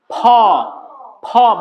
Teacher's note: দুই ঠোঁট একসাথে, ফ, ওই যে ফি উচ্চারণ করলাম না, সেম ফ, দুই ঠোঁট একসাথে ফ, ফ বাতাস বেরোবে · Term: মহাপ্রাণ